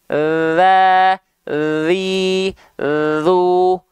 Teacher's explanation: kedengaran ada suara ngalir Z tuh ya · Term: sifat mengalir suara